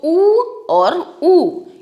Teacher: लेकिन जो ये पूर्ण वृत्ताकार है इसमें छोटा ऊ और बड़ा ऊ दोनों आते हैं, क्योंकि हम बोलकर देखें अगर तो ऊ और ऊ इन दोनों को बोलने के लिए हमारा जो ओष्ठ हैं पूरे गोल हो जाते हैं